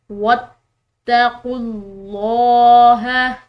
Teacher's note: لفظ اللہ کی لام موٹی پڑھیں گے کیونکہ اس کے پیچھے والے حرف یعنی کہ خوف کی پیش ہے۔ · تا مشدد ہے تو اس کو ہم نے پریشر کے ساتھ پڑھنا ہے